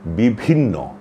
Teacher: প্রথমে আছে অল্পপ্রাণ। তারপরে আছে মহাপ্রাণ। প্রথমে ব তারপরে হচ্ছে ভ। এটা অনুসরণ করেই আমাদের উচ্চারণ করতে হবে।